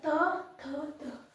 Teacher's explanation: त दांत में सटेगा जीभ जो है वो दांत में